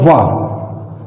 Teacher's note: ये दंत और ओष्ठ दोनों के सम्मिलित रूप से इनका उच्चारण होता है, यानी ये दंतोष्ठ है।